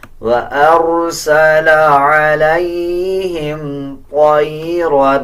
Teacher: طا کو پر یعنی موٹا پڑھا جائے گا، را کو بھی پر پڑھا جائے گا